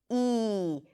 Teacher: This is a front vowel, meaning that the tongue rolls forward to produce this sound. It's a high vowel, so the tongue rolls forward as high as possible before it touches the upper palate to produce this sound. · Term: high E